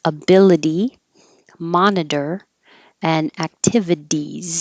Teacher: there's a lot of t's changing to d's ability monitor and activities the second t changes to a d